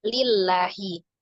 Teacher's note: Tapi sebelumnya berharokat kasrah di huruf lam lillah, maka dibaca dengan tipis lillahi. La-nya mad, dua harokat lillahi.